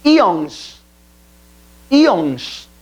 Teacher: paroxítona, maior inflexão da voz na penúltima sílaba e se acentua porque termina em ONS.